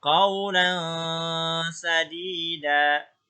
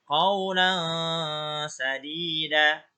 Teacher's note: Qaulan, ya, jadi n-nya tidak terlalu jelas, dibaca samar n-nya. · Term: ikhfa